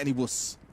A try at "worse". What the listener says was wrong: Worst. Has a T at the end.